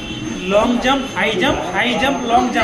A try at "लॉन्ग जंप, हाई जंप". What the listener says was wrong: भी स्लो बोले थे, फास्ट बोलिए। नहीं फास्ट बोलिए। स्पीड बढ़ाइए।